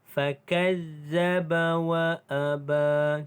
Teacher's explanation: Ba dibaca dengan panjang 2 harakat kerana mad asli huruf alif.